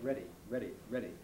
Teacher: the american speeding up or flapping of d operates in words like ready